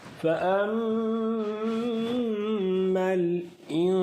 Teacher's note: ہم نے 15 حروف کو گنا تھا، ان میں سے سین بھی آ رہا ہے نون، تو اس لیے نون ساکن کے بعد سین ہم ادھر اخفا کریں گے. ناک میں آواز کو دبانا نہیں ہے، نرمی کے ساتھ 1 سیکنڈ کے لیے آواز کو رکھیں گے تو اس کو اخفا کہتے ہیں